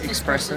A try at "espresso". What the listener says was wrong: Espresso, not espresso. You said espresso. It's espresso. There's no X in it.